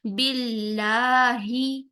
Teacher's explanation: हा की जेर को बहुत बारीक रखते हुए आपने आवाज और होठों दोनों का झुकाव नीचे की तरफ रखना है